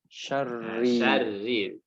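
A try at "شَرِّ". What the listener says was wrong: Syarri. Jadi jangan ada tebal ya. Langsung buka, langsung tarik. Buka, syarri. Seperti itu urutannya. Syarri. Nah, jadi tak perlu maju dulu ya, jangan syar. Kalau maju dia agak tebal jadi. Syarri. Syarri. Syarri. Tipis ya. Tapi langsung tipis. Syarri.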